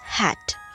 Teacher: this sound is produced at the glottis and the two vocal chords are the articulators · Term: glottal